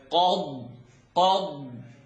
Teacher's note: It's qaf at the back, dad at the sides. Qad, and the air has to really fill up here because the dad needs to be heard.